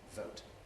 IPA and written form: vəʊt (vote)